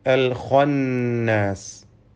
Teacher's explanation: ഖാഇന് തഫ്ഖീം നൽകി പെരുപ്പിച്ച് സ്വരഭാരത്തോടെ ഉച്ചരിക്കണം. ഇതല്ലാത്ത മറ്റക്ഷരങ്ങൾക്കൊന്നും തഫ്ഖീം വരാതെ സൂക്ഷിക്കേണ്ടതുമാണ്.